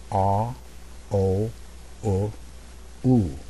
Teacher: jaw closing a little bit and also this is very important my lips become more and more round